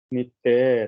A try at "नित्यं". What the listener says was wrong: या नित्यम है, वो ऊपर जो बिंदी है ना उसमें माँ बन जाता है संस्कृत में, तो कथयन्तश्च माम नित्यम।